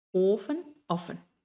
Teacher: ofen es una O alargada porque tenemos una F y aquí es una O corta porque tenemos dos F